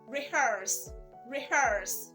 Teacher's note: Most persons pronounce it as rehearse. The last sound is not z, it's s.